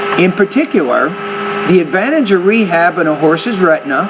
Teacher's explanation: at the end of each thought group the tone is a little bit higher at the end until you get to the last thought group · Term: intonation